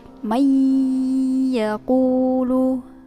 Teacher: Ya adalah huruf idgham bi gunnah. Nah, jadi cara membacanya yaitu dengan dimasukkan ke ya, kemudian disertai dengan dengung di hidung